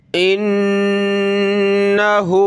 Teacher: इन्नहु नून पे गुन्ना होगा